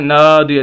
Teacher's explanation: نون کے آگے الف ہے، اس وجہ سے ہم نون کو کھینچ رہے ہیں